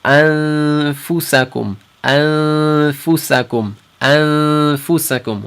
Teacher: we're going to nasalate for 2 haraka and hold it